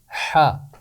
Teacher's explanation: حا کی آواز کے لیے ہم اس کے اوپر ایک کیپ لگائیں گے اور اس کی آواز بنے گی حا۔ حا کا نام لمبا ہے، حا، اور اس کی آواز مختصر ہے، حا